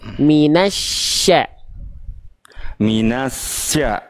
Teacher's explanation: ketika masuk ke s dia langsung tengah lidahnya langsung naik.